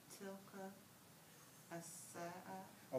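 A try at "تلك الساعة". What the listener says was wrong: We won't go, if you once you have Aleph Lam, go right to your Aleph Lam. Don't read it as two separate, read it as one word. Tilka sa'atu. Don't say tilka as-sa'a.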